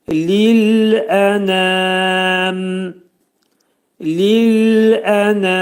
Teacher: mimi ağzımızı yumub mimi izhar edirik.